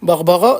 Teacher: du coup je prononce le R roulé